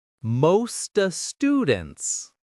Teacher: The stress is on most and students.